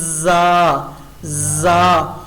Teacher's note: اور زا پر ہم مکھی کی بن بناہٹ کی آواز لیں گے اس طریقے سے جیسے مکھی کرتی ہے، تو ہم نے ایسے وسلنگ شو کرنی ہے زا زا.